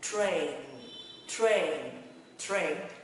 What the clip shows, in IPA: treɪn